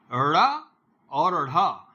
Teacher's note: ड़ा में ऊपर उठ करके नीचे गिरती है जीभ, और ढ़ा में भी ऊपर जा करके नीचे गिरती है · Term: उक्षिप्त वर्ण